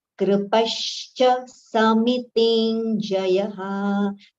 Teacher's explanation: It should not be kru, it should not be kri also. The pronunciation is in between the kru and kri.